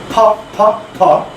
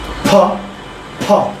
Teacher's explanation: ফ, it comes from 2 lips, 2 ঠোঁট থেকে আসতেছে ফ, হালকা বাতাস বের হবে ফ ফ ফ। দেখেন হাত দিয়ে ধরেন বাতাস বের হবে।